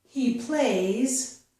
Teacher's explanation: they might not pronounce the final Z sound. They might drop this and just say he play.